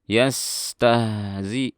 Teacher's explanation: ada sin dan ha sukun, rokhawah dialirkan suaranya